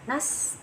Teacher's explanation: ada sifat hams nas, aliran udara angin nas, sama sifat sofir berdesis